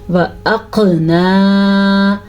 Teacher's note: ایک تو ہم نے قاف کو پر یعنی کہ موٹا پڑھنا ہے، دوسرا قاف کے اوپر ہو رہا ہے قلقلہ. قلقلہ کہتے ہیں جب کسی لفظ کے اوپر جھٹکے کی آواز پیدا ہو تو اسے قلقلہ کہتے ہیں.